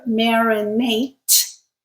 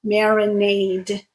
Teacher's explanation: the unvoiced sound t creates a verb, marinate, and the voiced sound creates the noun, marinade.